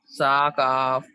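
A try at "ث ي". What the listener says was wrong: سا کاف نہیں، یا ہے وہ، یا.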